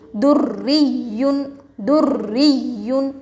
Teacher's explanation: تشدید والی را کو 2 بار پڑھتے ہیں، ایک بار پچھلے والے حرف سے ملا کر، ایک بار خودو سے